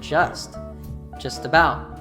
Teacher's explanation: in the word about, we just stress the second syllable. The first syllable reduces and hooks to the T in the function word just about.